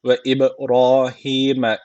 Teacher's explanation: B harfi cezim almış. O zaman burada kalkale teciti var. Birazcık vurguluyoruz.